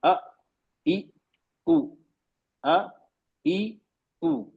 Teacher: बंद की फिर खोल दिया हमने वोकल कॉर्ड को तो एकदम से अचानक आवाज निकली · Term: हमजा